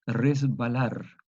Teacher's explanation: la s es sorda la b es sonora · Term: asimilación